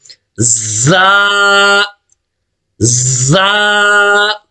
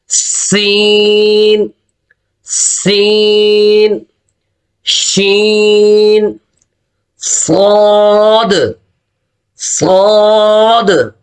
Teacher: اس کو اوپر ہم نے سیٹی بجانی ہے، یہ سیٹی والے حروف ہے زا زا، اور نیکسٹ یہ بھی سیٹی والا ہے سین سین شین صاد صاد۔